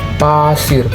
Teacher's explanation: Bibir rapat, udara dilepas cepat, tidak bersuara.